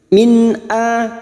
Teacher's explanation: nun sukun bertemu hamzah idhar halki, nun sukun dibaca jelas tanpa mendengung